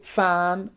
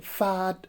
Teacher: so you can see that we are using lower lip and upper teeth and we pronounce it as f